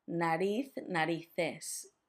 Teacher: make sure that that Z has a th sound